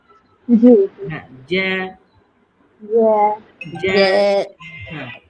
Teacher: জ্যা বললে কিন্তু জিহ্বার মধ্যখান দেখবেন উপরে তালুর সাথে লেগে যাচ্ছে।